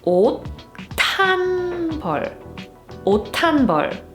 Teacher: So even if it's spelled this way, it's pronounced 옷. And the pronounced consonant, which is 디귿, that's the sound that gets aspirated when we read this phrase